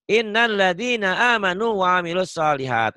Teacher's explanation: Ini ditahan gunnah. Innal gunnah didengungin ya, ditahan dengung ke hidung.